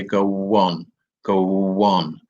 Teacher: we call intrusion where the the W sound here this this this W sound has come in here in order to make this speech sound more natural so that we don't say go on we say go one